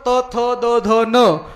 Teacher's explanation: जीभ दाताला अडकली तरच त, थ, द, ध, न या वर्णाचा उच्चार व्यवस्थित होतो